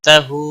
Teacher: ہا کے اوپر الٹا پیش ہے، ایک الف کے برابر کھینچ کر پڑھیں گے